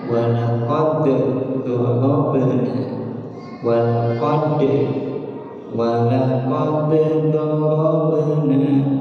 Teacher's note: jumhur ulama nalika dal mayunan dod maka tetap bunyi qalqalah